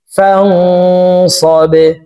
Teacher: বা কলকলার হরফ নিচের দিকে ধাবিত করে ধাক্কা দিয়ে উচ্চারণ করব।